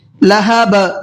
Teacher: قلقلہ کہتے ہیں تھوڑا سا آواز کو ڈبل کر کے پڑھیں گے